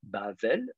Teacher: le deuxième bête, lui, est précédé par un A, Bavel, et donc du coup, il sera donc non pas occlusif, mais fricatif